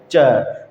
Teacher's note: जब आप च बोलोगे ना तो उच्चारण करने से पहले ही आपके जो मुखांग है ऐसे बंद हो जाएंगे कि हवा बाहर नहीं निकल पाएगी। ठीक है, इसलिए उनको निकलने में संघर्ष भी करना पड़ता है, इसलिए इनको स्पर्श संघर्षी व्यंजन कहा जाता है।